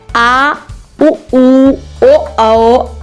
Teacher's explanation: आ, जो गले के द्वारा पढ़ा जाता है, उसे हम पश्च स्वर कहते हैं।